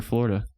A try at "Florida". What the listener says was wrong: It's F-L-O-R, not F-L-A-R. Florida, not Florida.